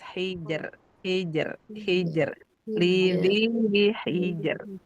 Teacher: jimnya dia syiddah jadi enggak rakaah